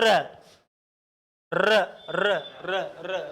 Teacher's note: दूसरा प्रकंपित इसलिए कहते हैं क्योंकि जब हम इस वर्ण को बोलते हैं तो हमारी जीभ 2-3 बार क्या करती है? कंपन करती है। · जब हम इसको बोलते हैं तो हमारी जीभ 2-3 बार लुढ़कने की कोशिश करती है। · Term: लुंठित